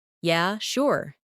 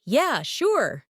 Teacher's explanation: if someone says, Yeah, sure. in a flat tone, it might mean they're not really interested. But if they say, Yeah, sure. with excitement, it's genuine agreement. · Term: intonation